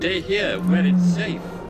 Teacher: The pronunciation of this actor, Ian McDiarmid, is just here without any r.